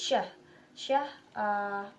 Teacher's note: And the next is sh. Place of articulation palato-alveolar or post-alveolar, and the manner of articulation still fricative, and sh includes two voiceless.